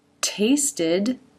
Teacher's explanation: Tongue up to make the t. Quick i sound. And then the d. tasted dad's tongue up again to make the final D.